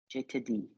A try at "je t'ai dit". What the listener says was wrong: We've lost the A sound, haven't we? Je t'ai dit.